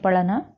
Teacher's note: ढ, ये जो है उक्षिप्त व्यंजन है